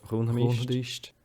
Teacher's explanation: You tend to get this change a lot where you have an ish can become an isht, and you'll see this with some of the other verb forms as well.